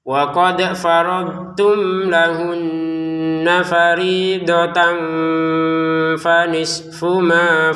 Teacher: tanwinnya bertemu fa dibaca samar